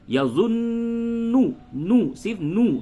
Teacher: غنہ تو کریں گے لیکن نون کے اوپر پیش ہے، اور زبر زیر پیش کو جلدی پڑھتے ہیں